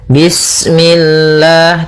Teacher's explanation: Usahakan jangan sampai memantul, bismillah, nah seperti itu atau misalnya bismillah, nah ini memantul. Kemudian lafal Allah ketika sebelumnya kasrah, maka dia dibaca dengan tipis